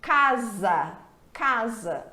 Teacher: Porque entre duas vogais, quando a gente tem um S, esse S apresenta som de Z.